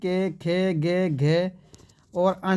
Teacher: इनका उच्चारण कहां से होता है दोस्तों कंठ से भाई यानी कि गले से